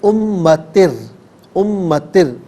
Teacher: یہاں را ساکن ہے، را ساکن سے پہلے 2 زیر کی تنوین ہے، تو امتر یہاں پر ناظرین جب را ساکن کریں گے تو اسے باریک پڑھیں گے